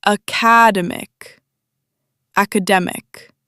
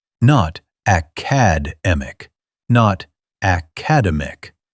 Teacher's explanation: 4 syllables. Third one loudest.